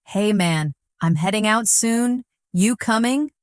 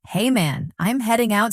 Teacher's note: Notice the dropped G in heading and coming